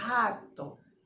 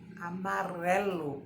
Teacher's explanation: E quando o sonzinho é brando, a gente dobra a nossa linguinha para falar. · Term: R brando